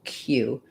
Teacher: cue and cues have the k sound with a glide and the oo